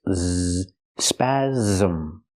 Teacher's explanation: The S makes the Z sound like zebra with a voice. Z, spasm. It has two syllables.